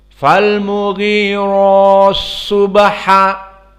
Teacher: Maka sama ti makhraj ta yang sama juga sebelumnya ti al adiyati, di sini fal mughirati bertemu dengan so. Maka ti-nya di sini sama bertemu dengan so, dihapuskan atau kita katakan diidghamkan masuk kepada so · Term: idgham al-kabir